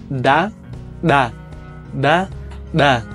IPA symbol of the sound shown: ɗa